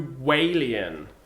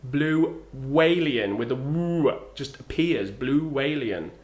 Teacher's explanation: another linking sound is w. And this typically appears when the sound at the end of the first word is ooh or o.